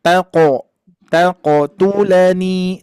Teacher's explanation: Terus ini pantulannya di sini huruf qaf. Kalau pantulan huruf qaf itu pantulannya isti'la, tebal ya. Maka nanti Ibu mantulkannya seperti bunyi o saja